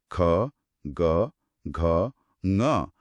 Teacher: ऐसा लगता है जैसे जीभ का बिल्कुल पिछला हिस्सा गले के पास जाकर हवा को एक पल के लिए रोक रहा है। · ध्वनि सीधे गले के एकदम निचले हिस्से गूंजती हुई महसूस होती है। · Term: कंठ्य